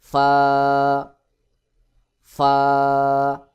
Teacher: দিয়ে ফা উচ্চারণ করে ওটা সহি উচ্চারণ নয় সহি উচ্চারণ হলো নিচের ঠোঁটের পেট সামনের উপরের দুই দাঁতের আগার সঙ্গে লাগাইয়া বাহিরের দিকে বাতাস বের করে উচ্চারণ করতে হবে